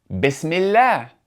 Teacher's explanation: Meaning, the hamza is only going to be pronounced if it begins speech, otherwise, it's not going to be pronounced, but rather the previous word is just going to connect to that word with no pronunciation of the hamza. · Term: connecting hamza